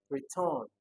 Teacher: You can see that the stress is on the second syllable. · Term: Stress on the second syllable